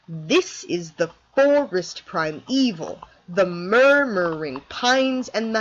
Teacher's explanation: This Rhythm has one stressed syllable followed by two unstressed ones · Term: Dactyl